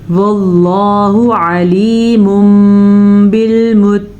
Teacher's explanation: واللہ لفظ اللہ کو پر پڑھ لیجئے گا، اور تنوین کے بعد یہاں پہ حرف با آیا ہوا ہے تو تنوین کو میم میں بدل دیں گے